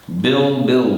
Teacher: many times we don't pronounce the D very strong. No, it's not a very strong consonant.